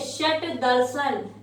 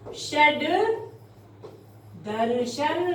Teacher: तो देखिए षट दर्शन, जैसा कि हमने कहा कि अघोष के बाद सघोष आए तो अघोष का सघोष में परिवर्तन हो जाता है। तो षट, ये व्यंजन संधि का नियम, षट, और यहाँ आया है दर्शन, तो इसका सघोष हो जाना था, टे ठे डे, डे आ जाना था यहाँ पर, ये बनता षड दर्शन, लेकिन ऐसा नहीं हुआ।